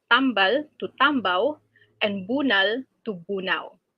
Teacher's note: There are also cases where word final L becomes W